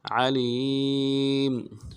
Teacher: الخلاق بلا وهو الخلاق العلیم، علیم، عین کو موٹا کریں گے، لام کو یائی مدہ کے ساتھ ملانا ہے، یا کے ساتھ ملانا یائی مدہ ایک مقدار میں کھینچیں گے ، میم کو نرم سے ادا کریں گے، علیم وهو الخلاق